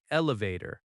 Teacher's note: Elevator has stress on vator.